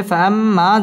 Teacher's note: ফাআম ওয়াজিব গুন্নাহ করে পড়তে হবে